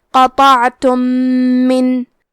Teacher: ہم میم ساکن کو دوسرے میم میں ملا کے ایک ہی میم غنہ اور تشدید کے ساتھ پڑھیں گے۔ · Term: ادغام متماثلین صغیر